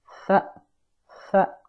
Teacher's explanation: on doit la prononcer en posant le bout de la langue sur le bout des incisives supérieures. C'est comme si on pinçait la langue avec ses dents. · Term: la lettre tha